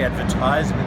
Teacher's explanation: in advertizement they use a Z and the emphasis is on the third syllable